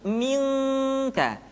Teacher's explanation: ketemu kaf maka dominan kepada huruf eng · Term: ikhfa